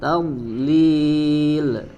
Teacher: Ya, kemudian di sini ada huruf ta tipis ta, kemudian huruf dhad ya, huruf dhad sukun tidak dipantulkan ya, melainkan hanya dialirkan suaranya dari hafatul lisan ya, dari bagian sisi sisi lidah yang disentuhkan ke bagian gigi geraham ya. Fi tadlil, kemudian huruf lam terakhirnya dibaca tipis dan tidak dipantulkan.